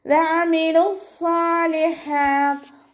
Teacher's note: വഅമിലു സ്വാലിഹാത്ത് ലാമിൻ്റെ കൂടെ വാവമദ് വന്നിട്ടുണ്ട്, പക്ഷെ നമ്മൾ അടുത്ത വേർഡായിട്ട് കൂട്ടി ഓതുമ്പോൾ വാവമദിനെ കളഞ്ഞിട്ടാണ് ഉച്ചരിക്കുന്നത്